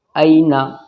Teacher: اینا، دیکھیے یا لین ہو رہا ہے، یا ساکن سے پہلے والے حرف کے اوپر زبر ہے تو یہ نرم آواز کے ساتھ جلدی پڑھا جائے گا